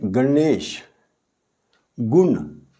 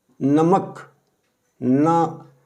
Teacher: इस मूर्धन्य ना का उच्चारण करते समय जीव मुख के ऊपर को, यानी ऊपर वाले दांतों के पीछे मुख के कठोर भाग को छूती है, इसलिए इसको मूर्धन्य ना कहते हैं।